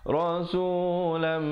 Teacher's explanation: tanwin bertemu mim idgham bi gunnah kadar dengung 2 harakat